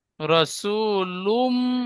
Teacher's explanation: পেশ তানবিন তানবিনের পরে ইউমিনের চারটি অক্ষরের মধ্যে মিম এসেছে তাই একে এক কালি পরিমাণ গুন্না করে পড়তে হবে একে ঈদগামে নাকিস বলে